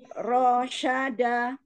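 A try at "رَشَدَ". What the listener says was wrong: Ayo, kebawa enggak lagunya? Kalau ke bawah pasti yang nggak panjang dipanjangkan. Jangan ke bawah lagu.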